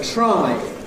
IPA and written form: traɪ (try)